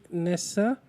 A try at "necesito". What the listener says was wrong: नेसे नेसा नहीं NECE. तो again तो वो बोल वैसे रहा ना इसलिए लिख वैसे रहा है. नेसा सी तो नहीं है, नेसे सी तो है. NECE SITO.